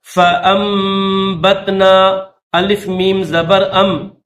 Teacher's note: الف کو میم کے ساتھ ملائیں گے، یہ نون نہیں پڑھیں گے